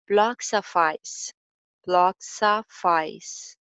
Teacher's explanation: L sound पे भी focus करना है, ब्लॉक्स, ब्लॉक्स ऑफ, soft, ब्लॉक्स की एंडिंग साउंड ऑफ में चली जाएगी और ऑफ की एंडिंग साउंड जो है वो आइस में लिंक हो जाएगी।